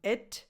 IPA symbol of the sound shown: ɪ